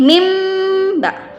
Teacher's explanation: Mim ba'di, nun mati berjumpa dengan ba, itu merupakan iklab, yaitu membalikkan bunyi nun mati menjadi bunyi mim yang ringan. Jadi bukan kita baca lagi min, tapi mim ba.